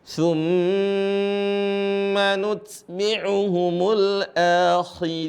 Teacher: di sini ada mim bertasdid, ingat ditahan.